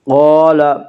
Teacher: الف مدہ کو ایک الف کے برابر کھینچ کر پڑھیں گے۔